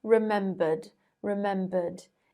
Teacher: it's pronounced with a d because it ends with a schwa vowel sound which is voiced but in american english the r is pronounced at the end